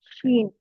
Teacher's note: മുകളിലേക്ക് തട്ടിച്ചിട്ടാണ് ജീൻ എന്ന് പറയുന്നത് അതുപോലെതന്നെ ഷീൻ ഷീൻ നടുഭാഗമാണ് മുകളിൽ തട്ടേണ്ടത് നാവിന്റെ നടുഭാഗം മുകളിൽ തട്ടിച്ചിട്ടാണ് ഷീൻ